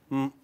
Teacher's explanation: both your lips tightly shut together and air passes through the nasal passage and you get the nasal sound m